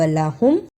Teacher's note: ہاں کو میم سے ملانا ہے پیش کے ساتھ